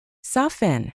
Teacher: With soften, the t is always silent.